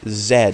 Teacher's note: and you notice that your throat doesn't vibrate at all but if you say Zed as in zadok your throat will vibrate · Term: voiced